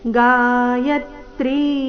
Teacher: ಯ ಮೇಲೆ ಆಘಾತ ತ್ರಿ ದೀರ್ಘ